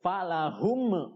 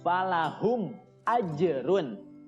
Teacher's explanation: Mim sukunnya harus dibaca jelas dan tidak boleh mantul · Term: idhar syafawi